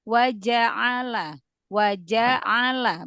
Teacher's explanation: coba jimnya fathahnya diselesaikan biar nggak kayak kolkolah